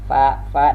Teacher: pertemuan per bibir bawah dengan gigi muka yang di atas. Fa dan dia pun juga termasuk rakhawah dan alhamas.